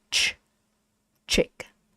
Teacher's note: this ch is a voiceless sound. You use a lot of air, right? Ch, chick. In English, in Vietnamese, no air.